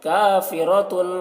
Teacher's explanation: کاف کو باریک پڑھیں گے، را کو پور پڑھیں گے، را کے اوپر زبر ہے۔